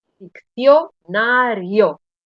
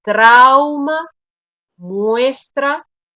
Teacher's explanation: la vocal cerrada esa y está un poco escondida detrás de la vocal abierta y la vocal abierta tiene como más peso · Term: diptongo